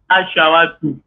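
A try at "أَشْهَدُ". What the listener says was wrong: Ashhadu. Non, ce n'est pas Shawa, c'est Ha. Ashhadu.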